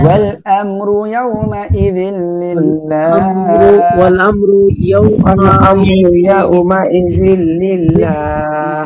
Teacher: ওয়াল আমরু কোনো গুন্না নাই র মোটা করে পড়বেন · ইযিল গুন্না বাদে মিলিয়ে পড়বো লিল্লাহ এখানে তিন আলিফ টান হবে আল্লাহ শব্দের লামের ডাইনে জের চিকন করে পড়বেন